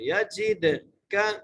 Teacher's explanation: جیم کو دال سے ملانا ہے، دال پر قلقلہ کرنا ہے۔